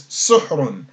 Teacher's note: So that means there would be a dhamma on the sin and a sukun on the ha, as there's no vowel between the H and the R.